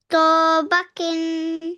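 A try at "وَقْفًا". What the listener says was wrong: खींचना नहीं है, फौरन पढ़ना है। तौबा किन वक्फ, वक्फन। खौ क्यों साकिन करें इसको। अभी तो बताया जैसे सोमद था इसी तरह इसको भी पढ़ना है, वक्फ में साकिन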